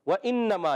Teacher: نون مشدد ہے. نون مشدد میں ایک الف کا غنہ کریں گے اور یہاں میم الف زر ما اور ایک چھوٹی مد بھی نظر آ رہی ہے.